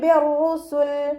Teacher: നൂനിൻ്റെ സൗണ്ടിനെ കേൾക്കേ ഇല്ല, മീമിൻ്റെ സൗണ്ട് ആക്കിയിട്ട് മാറ്റി മറിച്ച് മണിക്കുക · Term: ഇഖ്ലാബിൻ്റെ മീമാണ്